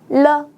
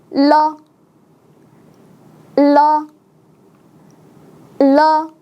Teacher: 이 자음은 혀를 때리면서 내는 소리인데요. · 이 르 소리는 바로 여기에서 소리 나는 자음이에요. 먼저 여러분의 혀를 잇몸 울퉁불퉁한 곳에 가져다 대고 튕기듯이 때려서 아래쪽으로 가져다 놓습니다. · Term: 자음 르